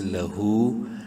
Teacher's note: ایک الف برابر ہا کو لمبا کریں گے الٹا پیش کی وجہ سے